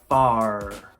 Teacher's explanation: in American English we must emphasize the R